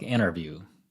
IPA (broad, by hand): in_erview